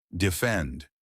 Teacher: Defend. Two syllables. Stress on the second part